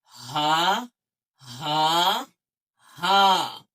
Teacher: جو حلق کا آخری حصہ ہے جو سینے سے قریب ہے اس سے حرف ہا نکلتا ہے، یعنی پوری ہوا آئے گی سینے کے قریب سے،